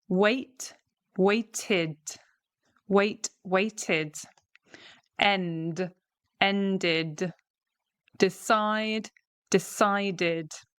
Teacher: So you can see there we're adding an extra syllable, waited. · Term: id sound